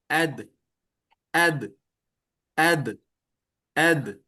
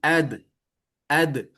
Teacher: Ujung lidah menyentuh tempat tumbuhnya gigi seri bagian atas. Jadi, ad tidak ada udara yang mengalir, maka nama sifatnya adalah jahar.